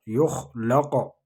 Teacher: يخلق قاف پر قلقلہ ہوگا، قاف ساکن ہے آگے زبر ہے. يخلق مثلها مثلها لام باریک پڑھیں گے.